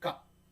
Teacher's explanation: हमारे दोनों ओठ बंद हो रहे हैं, बाइलेबियल, बाइलेबियल है ये